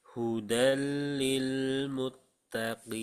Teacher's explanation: Jadi jangan ditebalkan mut tapi muttaqin.